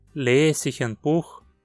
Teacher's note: Ao transformarmos numa pergunta, fica Lese ich ein Buch? Perceba como lese perdeu o E final.